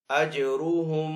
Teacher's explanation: جیم کے اوپر کلکلا کریں گے، را کو یہاں پہ پر پڑیں گے